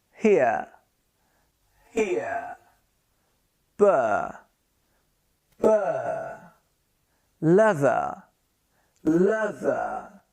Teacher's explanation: when a word ends with R, in British we pronounce it with a schwa sound